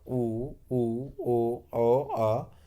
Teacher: जिन स्वरों के उच्चारण में ओंठ गोलाकार होते हैं वृत्तमुखी स्वर कहे जाते हैं।